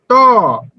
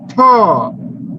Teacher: থ থেকে বেশি বাতাস বেরোচ্ছে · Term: মহাপ্রাণ